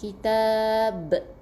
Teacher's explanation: qalqalah yang maksud dia ada detakan, ada lantunan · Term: qalqalah kubra